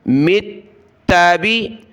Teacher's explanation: میم کو ملائیں گے تا کے ساتھ، میم تا زیر مت، تا زبر تا، مت با زیر بی، یا قوم اتبی، تا کو سخت کیا تشدید کی وجہ سے